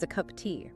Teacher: That word of is barely there. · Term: weak forms